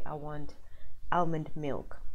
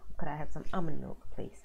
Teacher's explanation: now you do not pronounce the L in the middle